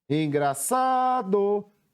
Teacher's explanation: Qual foi a sílaba que eu mais demorei pronunciando? Foi a sílaba sa. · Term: sílaba tônica